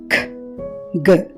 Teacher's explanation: వీటిని పలికేటప్పుడు నాలుక వేలర్ ని టచ్ అవుతుంది